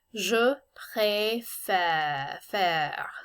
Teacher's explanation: So the first of the E's in this word has the accent aigu, and that's pré, et. But the second of these E's, the one going in the other direction, it's kind of a lighter sounding E, almost like the E in bed. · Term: accent grave